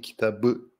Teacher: the P sound becomes the B sound